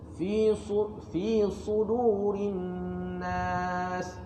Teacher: Sin tu nipis, shad tu sedikit tebal. Pasal shad tu ada sifat lidah isti'la ataupun lidah terangkat dan itbaq, dia menimpil.